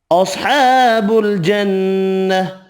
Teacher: صاد حروف مستعلیہ پر پڑھیں گے، نون مشدد پر غنہ کرنا ہے، کھڑا زبر 1 الف کی مقدار میں کھینچ کر پڑھیں گے، ہا ساکن پڑھا جائے گا وف کی صورت میں۔